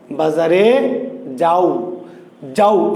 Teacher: এই আ আর ওকে আলাদা করে উচ্চারণ করা যায় না।